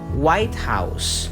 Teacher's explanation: the primary stress is on the word white